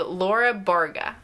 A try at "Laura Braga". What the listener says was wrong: Just pronounce what they're actually saying. Pronounce those letters. Laura Braga. Even if you didn't roll the R, it's just the next letter that comes in the name. Not Barga, Braga.